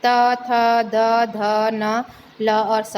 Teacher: तो ये दंत्य व्यंजन है क्योंकि हमारी जीभ दांतों को छूती है।